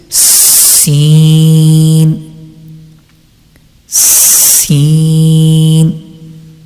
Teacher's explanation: the tip of the tongue touches the edge of lower two front teeth and lightly touches the edge of the upper two front teeth, and sound will come like this, Sin, Sin.